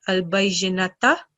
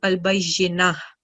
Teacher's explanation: So whenever you have ta marbuta at the end, when you're pausing, so whichever stroke it carries, it changes to sukoon, and ta changes to ha. So instead of reading it as al-bayyinata, it'll change to al-bayyinatu, it'll change to al-bayyinah.